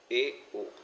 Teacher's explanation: अर्ध संवृत की बात करें तो यानी आधा बंद रहता है मुंह